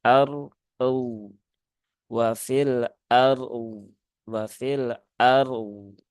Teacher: tunaikan dulu tawasud dari huruf ro, kemudian tunaikan rokhawah dari huruf dhad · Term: wakaf pada dua huruf sukun